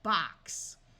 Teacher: So that is why we say it has an unvoiced sound, because it has the unvoiced sound of S